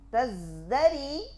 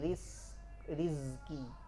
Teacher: Berubahnya jahar menjadi hams pada zai.